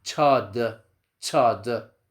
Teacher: It's because it is a combination of a T followed by a Sh sound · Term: Ch sound